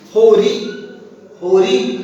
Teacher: ला की जगह पर रा का प्रयोग करते हैं